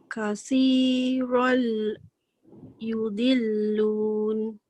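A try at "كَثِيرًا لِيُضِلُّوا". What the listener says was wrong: La dia tak bunyi. Kathiran la yudillun.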